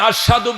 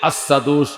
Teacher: তিনি আশহাদু বললে আসাদু উচ্চারণ হইতো, আসাদু সিনটা সিনের মতো উচ্চারণ হইতো।